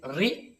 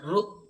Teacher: আমরা বলছি ঋ কিন্তু দক্ষিণ দক্ষিণ ভারতের দিকে উচ্চারণটা হচ্ছে রু এরম করে একটা উচ্চারণ করে